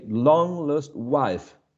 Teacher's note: if we stressed um long we cannot stress the following syllable lost because we are going to stress wife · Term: rhythm